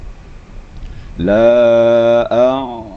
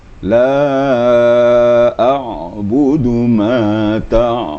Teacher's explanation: makhrajnya di sini di wastul Haq di di tengah-tengah tenggorokan ya tengah-tengah tenggorokan jadi ada terasa getarannya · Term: huruf Ain